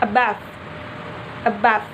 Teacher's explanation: the first syllable a is pronounced quickly and weakly and then the second syllable bath is pronounced loudly strongly and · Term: phonetic stress